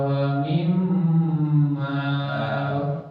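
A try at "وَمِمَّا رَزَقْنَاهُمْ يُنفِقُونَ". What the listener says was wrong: Tuh. Jadi agak dipanjangkan. Wa mimma razaqnahum yunfiquna. Nah, jadi gunanya pada mim yang bertasydid.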